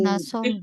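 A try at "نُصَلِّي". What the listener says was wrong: Enggak nah. Nusolli. Karena tugas kita hanya merubah hurufnya saja, tidak tanda gantinya. Apa tanda bacanya nggak usah dirubah. Ya, jadi nusolli.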